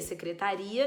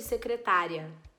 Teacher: secretaria é um hiato, secretária é um ditongo